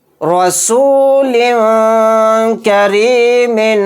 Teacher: وہ نون کی آواز کو ناک میں چھپا کر نکلے گا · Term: اخفا